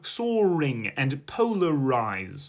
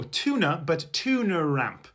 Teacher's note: the silent R at the ends of words could resurface if followed by a vowel. So words like so and polar could become soaring and polarize.